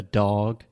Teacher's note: maybe I am exaggerating the duration a little bit when I say dog and perhaps that is my Southern accent coming up